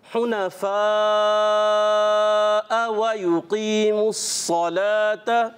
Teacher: ये हमज़ा जब आता है इसको हमने वाज़े करके पढ़ना है, यानी कि ये नरम नहीं होना चाहिए।